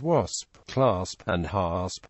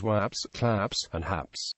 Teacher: metathesis of final SP in such words as wasp clasp and hasp pronounced as waps claps and haps